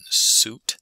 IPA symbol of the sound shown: s